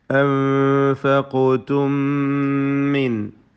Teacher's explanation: സാക്കിന മീമിന് ശേഷമുള്ള മീമിൽ ലയിപ്പിച്ചുച്ചരിക്കണം. ഇദ്ഗാം മിസ്ലൈൻ സഗീർ മണിച്ചുകൊണ്ട് ഓതുക.